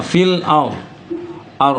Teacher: Maka ro sukun itu bunyinya ditebalkan.